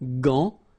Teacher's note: you've got this A-N, so it's nasal, gant, and then final T is not pronounced here